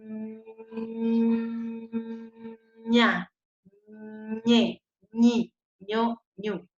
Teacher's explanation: Entonces yo digo que el fonema de la ñ es palatal, nasal y sonoro.